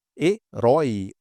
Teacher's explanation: Uma oxítona aqui, concorda? É a última sílaba que é mais forte, tônica.